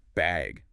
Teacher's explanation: they might ask, do you need a bag or even just bag with a rising tone?